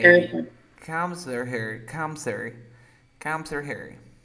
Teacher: remember that you drop the H sound